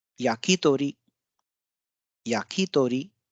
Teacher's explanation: we have ya as the low pitch syllable and ki, to and ri are high pitch ones